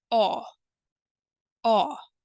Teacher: imagine the short sound a and o and produce something in the middle